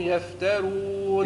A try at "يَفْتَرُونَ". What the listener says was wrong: يفترون رو مش رو فخم الراء المضمومة